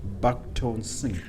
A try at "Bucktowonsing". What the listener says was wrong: Oh, no, it's not at all back. It's Bucktowonsing. It's Buck, B-U-C-K, It's Bucktowonsing.